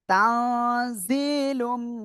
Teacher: তানবিনের পরে ইদগমে বা গুন্নার অক্ষর মিম গুন্নার সাথে মিলিয়ে পড়তে হবে।